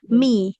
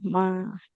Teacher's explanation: Huruf mimnya berharokat kasroh ya, bukan fathah. Jadi mi, bukan ma.